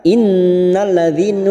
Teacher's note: Kita uraikan innalladzina, nun yang bertasdid gunna musaddada kita tekan selama 3 harokat